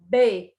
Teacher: Quando eu pronuncio B, percebam que eu tenho encontro de lábios para depois haver a explosão do som